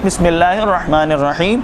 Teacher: इस हा की तरफ तवज्जो रखिएगा कि ये दरमियानी हलक से अदा होता है